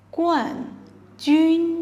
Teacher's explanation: 冠 has u sound and is pronounced the way the fourth tone, which is a falling tone